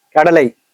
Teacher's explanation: இவ்வாறு ஒரு சொல்லின் இறுதியில் ஐகாரம் வந்தால் தனக்குடைய 2 மாத்திரை அளவில் முழுமையாக ஒலிக்காமல் குறைந்து 1 மாத்திரை அளவில் ஒலிக்கும்.